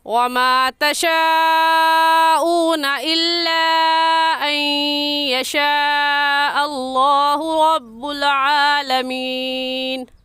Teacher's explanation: اس مد کا نام ہے مد متصل اور مد واجب، کیونکہ حروف مدہ جو کہ الف مدہ ہے، الف سے پہلے زبر آ گیا ہے تو اس الف مدہ کہیں گے، حروف مدہ کے بعد حمزہ اسی کلمے میں ہے، اس وجہ سے اس مد کو مد متصل اور مد واجب کہیں گے اور اس مد کو 4 الف کے برابر کھینچ کر پڑھیں گے، نہ اس سے کم اور نہ ہی اس سے زیادہ